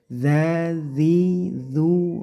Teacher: dengan cara dikasih angin yaitu ujung lidahnya ditempelkan di dua gigi seri atas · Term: Zal